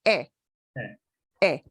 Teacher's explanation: Your mouth, your jaw does drop a bit. But that e is kind of like higher on your palate, and you smile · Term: e sound